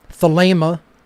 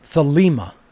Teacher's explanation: with a long a sound in the uh second syllable